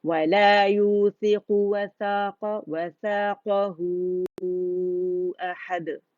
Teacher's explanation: اسے لازمی آپ نے مد صلہ کبریٰ کو 4 to 5 کاؤنٹس کھینچنا ہے